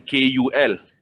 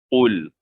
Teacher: Akan tetapi kita kena berhati-hati sebutan qul ini. Jangan kita sebut dengan KUL. Kita kena sebut dengan QUL. Qul, dalam. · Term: qaf